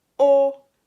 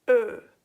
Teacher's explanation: O sound comes from the back and Ö comes from the front.